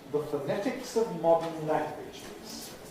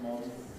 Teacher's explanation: weak form of modern, pronounced with a syllabic nasal, the way I said it, modern.